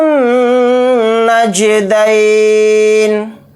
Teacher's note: نون کے اوپر تشدید ہے تو نون کے اندر غنہ کر کے پڑھیں گے، اور نون کو جیم کے ساکن کے ساتھ ملا کر پڑھیں گے، جیم کے اوپر جزم ہے تو اس میں قلقلہ کریں گے، دال یا زبر دئی کو جلدی پڑھیں گے، نون کو ساکن کر کے پڑھیں گے حالت وقف میں۔